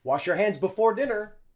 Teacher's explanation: Wash your. And notice how the possessive pronoun your hands, we don't say your. We use schwa.